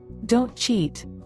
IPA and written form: doʊnt ʧit (Don’t cheat!)